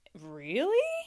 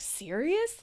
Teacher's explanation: People express it with just one word, with that rising at the end, can show that kind of disbelief, shock.